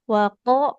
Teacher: kofnya tebal, istilah terangkat pangkal lidahnya